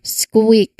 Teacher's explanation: it's the S sound, then K, then W, that lip rounding sound. Squeak. So you are transitioning from the S to the back of the throat, K, and then immediately rounding your lips for the W. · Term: SKW cluster